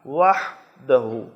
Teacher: وحدہ میں ہا ہے جو حلق کے درمیان سے ادا ہوتا ہے، زور لگانا ہے. وحدہ گول ہا کی طرح نہیں پڑھنا ہے، حلوے والی ہا.